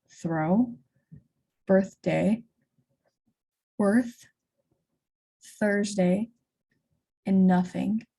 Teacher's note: When pronouncing the unvoiced consonant, th, only air is passing through the mouth to make this sound, and the tongue tip has to come through the teeth.